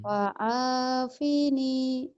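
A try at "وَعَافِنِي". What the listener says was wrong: Wa'afini. Pendek. Wa'afini.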